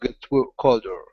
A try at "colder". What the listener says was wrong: Colder. Make sure to pronounce that L in there. Colder.